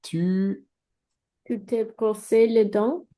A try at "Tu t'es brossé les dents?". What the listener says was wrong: Parfait. Oui.